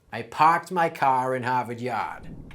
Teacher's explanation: the a sound in words like car and yard shifts to ah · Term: Boston accent